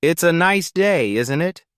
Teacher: The tone going up at the end tells the listener that you're asking a question. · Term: intonation